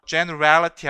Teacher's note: 앞에 첫 음절하고 세 번째 음절에 강세가 와요. 중간에 이것을 삭제할 수가 없습니다.